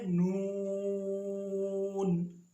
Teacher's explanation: نون زبان کا کنارہ اوپر والے دانتوں کے مسوڑے